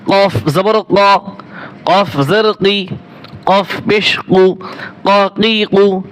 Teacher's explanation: কফ জবর ক, কাফের মতো কফ জবর ক, ক যেন না হয়, গলার ভিতর হালকা একটু আওয়াজ আসবে।